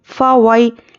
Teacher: वई या पे जज़म और उसके पहले ज़बर यालीन है, नरमी से जल्द अदा करेंगे।